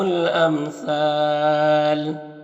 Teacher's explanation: امثال میں دیکھیں الف مدہ ہے اور اس کے بعد اگر وقف کریں گے تو لام کا زبر سکون سے بدل جائے گا، تو پھر یہاں پر مد عارض وقفی ہوگا